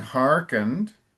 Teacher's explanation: the emphasis is towards the beginning, hearkened